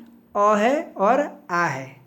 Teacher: अ और आ का उच्चारण कंठ से होता है, कंठ की सहायता से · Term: कंठ ध्वनि